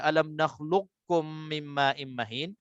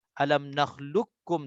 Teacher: Okey, untuk saya baca 2 harakat, mesti saya nak kena idgham kamil di situ tanpa bunyikan qaf. Alam nakhluqkum terus masuk dalam kaf.